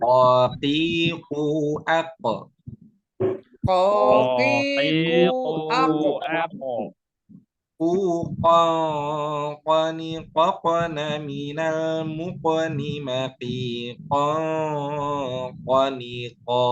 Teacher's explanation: Pangkal lidah, Ustaz. Pangkal lidah, Ustaz, belakang pada posisi menempel langit-langit bagian lunak. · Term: huruf qaf